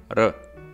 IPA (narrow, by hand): ɾ